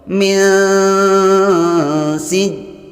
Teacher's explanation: Min, cara membacanya yaitu ujung lidahnya jangan sampai ditempelkan ke langit-langit mulut bagian atas supaya tidak berbunyi nun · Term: ikhfa